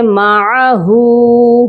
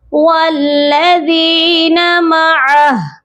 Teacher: جب بھی آخری حرف ہا ہو یا گول والی تا ہو اور وہاں پر ہم وقف کر رہے ہوں تو ہم ہا کو ساکن کرتے ہیں۔ یہاں پر ہا کے اوپر جو الٹا پیش ہے یہ نہیں پڑھا جائے گا، بلکہ ہا ساکن ہوگی، یہ پڑھا جائے گا والذین معہ۔